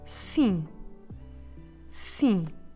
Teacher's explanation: And it is again nasal, so you know what you need to do. You need to leave your mouth open in the end, so don't close your lips. So just leave your mouth open, make sure the air is flowing through your nose as well, you know how to do it.